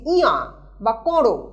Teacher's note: এইখানে স্বরের আনুনাসিকতা এই উপভাষায় রক্ষিত হয়েছে। যেমন ইহা, এখানে কোথাও নাসিক্য ব্যঞ্জন নেই, বা করো, এখানেও কোথাও নাসিক্য ব্যঞ্জন নেই, তা সত্ত্বেও সেটা উচ্চারিত হচ্ছে ইয়া বা করো।